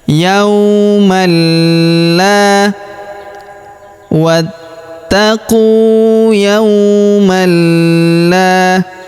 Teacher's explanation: maka tanwin an-nya melebur masuk ke huruf la atau lam yang berharokat tasydid, kita tahan dan kita tekan ya.